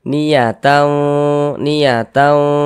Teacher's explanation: Maka bunyi tanwinnya disamarkan. Kemudian didengungkan. · tau ditahan, dipanjangkan sejenak, didengungkan. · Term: ikhfa hakiki